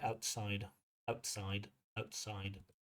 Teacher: Dropping that T is okay. Outside. But we want to get that d in there.